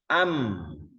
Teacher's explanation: dikasih Hamzah fathah a gitu Am nah suara berakhir di am dua bibir kita yang menutup bertemu am Oh berarti dari situ makhrajnya mim kita ngucapin ee misalnya